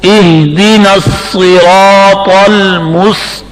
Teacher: سختی سے پڑھیں گے. قاف زبان کی جڑ تالو کی طرف بلند ہو کر قاف موٹی ہوگی